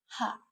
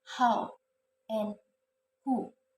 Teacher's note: This consonant sound is made when the flow of air is stopped by the glottis with some contractions of the glottis closing and then released. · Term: Glottal sounds